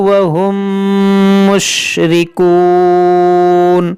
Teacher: میم ساکن کے بعد دوسری میم ہے، یہاں پر ادغام شفوی ہوگا، یعنی کہ یہاں پر بھی غنہ ہوگا